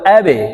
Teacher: বা কে কলকলা করতে হবে বা কলকলার হরফ ধাক্কা দিয়ে উচ্চারণ করতে হবে